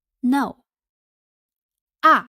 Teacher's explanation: The fourth tone is a falling tone, falls from the high pitch to the low pitch, the same as the English negation word.